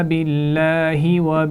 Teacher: باللہ لام جلالہ سے پہلے زیر ہے تو اس کو باریک پڑھا جائے گا